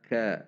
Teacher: ada sedikit dorongan udara saat mengucapkannya